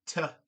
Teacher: t made at the alveolar ridge